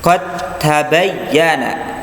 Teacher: dibaca langsung masuk ke huruf ta, ya, nggak usah kita masuk ke huruf dal dulu, ya, dikolkolahkan dulu baru masuk ke ta, enggak, itu salah, tapi langsung ke ta, qad tabayyana, ya. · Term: idgham